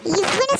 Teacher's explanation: இவ்வுன்னு சொல்லும் போது மேல்வாய்ப்பல்லு கீழ் உதட பொருந்துறதுனால பிறக்குது.